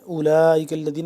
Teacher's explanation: لام کھڑا مد زبر لا چار الف کے برابر اس کو ہم لمبا کریں گے مد ہے اولئک الذین کاف لام زبر کل لام زبر لا.